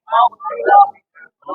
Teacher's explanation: র টা পুর হবে মোটা হবে